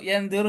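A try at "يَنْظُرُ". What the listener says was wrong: Enggak usah pakai ikhfa. Yang duru aja.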